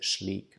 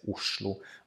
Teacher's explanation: We also sometimes say the SL combination as a shl, like an S or a sh sound combined with an L.